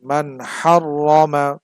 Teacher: হা টা হচ্ছে ইজহারের হরফ সুতরাং নুন টাকে স্পষ্ট করে পড়তে হবে